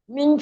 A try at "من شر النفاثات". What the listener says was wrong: شرل نہیں، شرن ہے، را کو نون سے ملائیں،